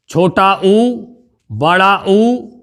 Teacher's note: छोटा ऊ और बड़ा ऊ ये बोले जाते हैं आपके ओष्ठों की सहायता से